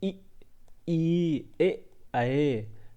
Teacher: जीभ के अग्र भाग से आते हैं। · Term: अग्र स्वर